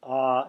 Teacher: the long ah your throat drops and your mouth opens wide